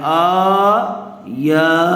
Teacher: دیکھیے حمزہ پر بھی کھڑا زبر ہے اور یا پر بھی کھڑا زبر ہے، اور کھڑا زبر برابر ہوتا ہے الف مدہ کے، اس لیے حمزہ اور یا دونوں کو تھوڑا تھوڑا کھینچ کر پڑھیں گے